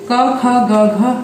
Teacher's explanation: क ख ग घ अंग कंठक भी कहे गए हैं, क्योंकि इनके उच्चारण के समय ध्वनि जो निकलती है वो कंठ से, यानी कि हमारे गले से निकलती है।